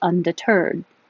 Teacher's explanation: the stress is on the end which is unusual for English